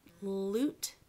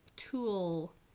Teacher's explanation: The ul becomes a little bit darker and it's a little more swallowed. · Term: dark L